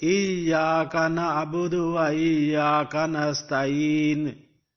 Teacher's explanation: Because the ayat is going to be ended here, so you will not pronounce the pesh of noon.